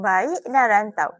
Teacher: perubahan posisi lidah yang menghasilkan bunyi geluncuran antara dua vokal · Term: diftong